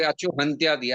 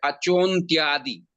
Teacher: Acho plus antyadi. The a gets assimilated with the cha. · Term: purva rup sandhi